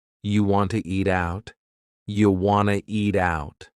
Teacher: We've dropped the question word completely, do. Just yeah, and then we have reduced want to become wanna.